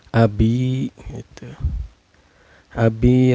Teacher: karena ada ia sukun sebelumnya berbaris kasrah ya cara bacanya ini dipanjangkan dua harkat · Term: Thobi'i